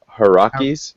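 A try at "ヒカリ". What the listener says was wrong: It's Hikaris because I think you got two of the letters mixed around.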